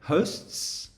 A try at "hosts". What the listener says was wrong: Okay, so there you kind of missing the final S now. So again, two sounds. Hosts, hosts.